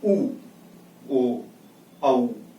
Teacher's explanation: गोलाकार हो जाता है, अर्थात जो हमारे ओंठ हैं वह कैसे हो जाते हैं? गोलाकार का रूप धारण कर लेते हैं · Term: वृत्तमुखी